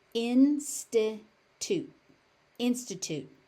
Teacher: Notice that that final t is unaspirated.